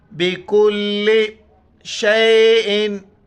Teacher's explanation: چھوٹی کاف ہے، باریک کر کے لام کے ساتھ ملائیں گے